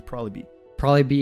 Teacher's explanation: think here he even reduced it further he was like probably it's like very shortened and it connects immediately with B